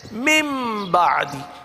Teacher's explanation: नून को मीम से बदल दिया जाता है